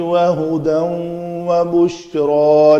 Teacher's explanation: ہدن کے بعد واو ہے، ادغام ہوگا